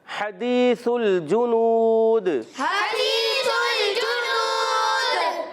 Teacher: हा का मखर है हलक का दरमियान वाला हिस्सा